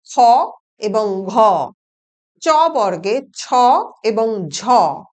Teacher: এর ঠিক উল্টো হচ্ছে মহাপ্রাণ ধ্বনি, যেখানে কিনা প্রতি বর্গের দ্বিতীয় এবং চতুর্থ ধ্বনির উচ্চারণে শ্বাস যুক্ত হয় বলে এই ধ্বনিগুলোকে মহাপ্রাণ ধ্বনি বা অ্যাসপিরেটেড সাউন্ডস বলে